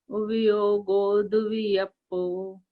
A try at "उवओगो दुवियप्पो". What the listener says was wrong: योगो नहीं, ओगो, ओ गो, ओगो दुवियप्पो,